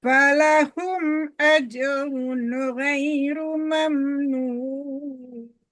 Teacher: Nggak boleh dengung di ajrun di situ ya. Itu ilhar. Falahum ajrun ghairu mamnun.